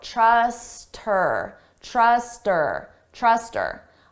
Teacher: here we can get rid of that H sound and it just sounds like trust her. But then you combine it to the word before, trust her, trust her, trust her.